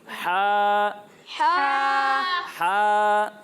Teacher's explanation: جب ہم ہا کی ادائیگی کریں گے تو اسے حلق کے درمیانے حصے سے پڑھیں گے